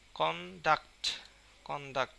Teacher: এখানে ডাক্টের উপরে বেশি উচ্চারণ হবে